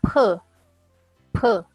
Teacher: seperti ngomong B, tapi udaranya lebih banyak dan tekanannya lebih ringan.